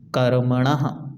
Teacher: पीछे विसर्ग है तो पूरा हा का उच्चारण आपको आना चाहिए